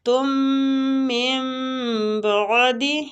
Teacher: تم من بعد، ادھر اقلاب ہو رہا ہے، اقلاب کا معنی ہوتا ہے بدلنا، جیسے ہم نون ساکنہ کو میم کے ساتھ بدل رہے ہیں